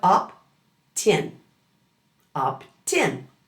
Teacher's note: Instead of saying opt in, that T at the end of opt moves over to begin in. So it sounds like opt-in, opt-in. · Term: consonant to vowel linking, consonant-to-vowel linking